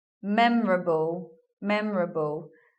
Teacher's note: We're not hearing an O here. Memorable. So goodbye O.